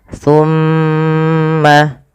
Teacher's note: Pada lafal summa ditahan dulu. Lafal mimnya ditahan. Jangan langsung dilepaskan.